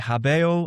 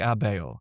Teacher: people are dropping their H's in Latin. There's this pronouncing, whereas once they would have said habeo, I have, they're starting to say things like abeo.